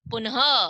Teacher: last में ह की आवाज आती है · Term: विसर्ग